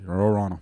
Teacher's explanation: Mais il y a un nom pour ce son-là, ça devient tout le même son. Toutes les voyelles deviennent un genre de E.